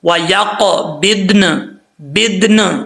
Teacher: قاف حروف مستعلیہ میں سے پر پڑھا جائے گا، با کے بعد ضاد ہے، ضاد بھی حروف مستعلیہ میں سے پر پڑھا جائے گا۔ وَيَقْبِضْنَ، بدن، لاسٹ پہ نون کا ساؤنڈ آنا لازمی ہے، ٹھیک ہے۔